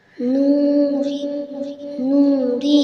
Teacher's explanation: نوری، نوری، نون واو پیش نون کھڑا زیر ری، نوری، ہا کھڑی زیری، نوری، ہا کے نیچے کھڑی زیر برابر ہوتا ہے یا مدہ کے، اس لیے کھڑی زیر کو ایک الف کے برابر کھینچ کے پڑھیں گے